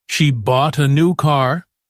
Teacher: Say it with clear rhythm, longer and louder on bought and new. Then say it again at normal speed. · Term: sentence stress